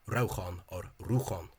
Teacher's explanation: the stress in Clare Irish and presumably other Munster dialects as well is on the first syllable, and that the pronunciation is rauchan or ruchan. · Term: stress on the first syllable